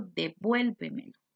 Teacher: Lleva el acento en vuel, va tildada.